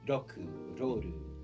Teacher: the RL sound in Japanese is more of a percussive sound because it sounds like a mix between R and L, at least speaking as an English speaker and how it sounds.